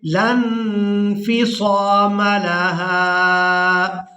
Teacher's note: یہاں پر ہم نے لام کو نون ساکن کے ساتھ ملانا ہے، لام نون زبر لن، یہاں اخفا کریں گے. لن انفصام لها واللہ سمیع علیم.